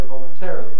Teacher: because if you say voluntary or even if you say voluntary you wouldn't expect to change the place of stress when you make it an adverb but that's what's happening people say voluntarily it avoids having so many unstressed syllables american